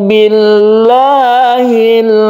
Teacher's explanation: Billahi ada lafaz Allah yang sebelumnya ada kasrah, maka dia dibaca tarqiq atau tipis.